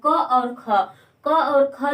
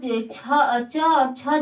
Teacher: क और ख जो होता है कंठ होता है और च और छ जो होता है तालु होता है।